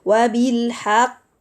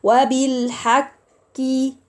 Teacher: There is elevation and the articulation point of the Qaf is clear, and not وَبِالْحَقِّ.